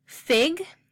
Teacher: the tongue is towards the front of the mouth and it's also at a high height and the short eye is also a lacks tensed vowel which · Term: short I